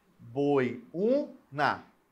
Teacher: O e o I juntos, formando um ditongo, e o U formando um hiato.